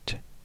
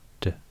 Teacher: alveolar plosive t, and the voiced d